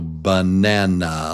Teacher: It's 3 beats. The strong syllable is number 2, nan. So banana.